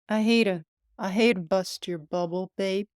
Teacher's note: Instead of t in the phrase to bust, we hear a quick d sound.